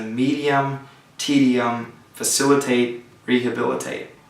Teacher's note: the stress comes on the third to last syllable